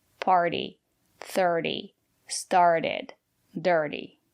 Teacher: We can also apply this rule if we have a vowel, R, T, and a vowel. The syllable after the letter T is not stressed. We pronounce the letter T as a fast D.